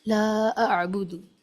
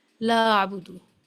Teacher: یہاں الف مدہ کے بعد حمزہ ہے، اس لیے اس کو کھینچ کر پڑھیں گے